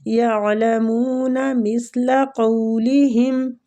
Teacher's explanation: قو وہ لین ہو رہا ہے، کھینچیں گے